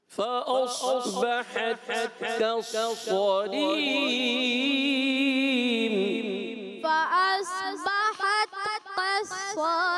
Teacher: सौद को मोटा करना है, काफ को बारीक करना है